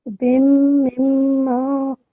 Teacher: because the meme are mushaddad, you need to take a bit of time there as well